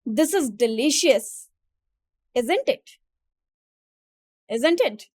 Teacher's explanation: When assuming the answer or making a quasi rhetorical comment, the voice falls at the end.